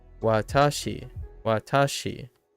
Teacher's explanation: so you go low high low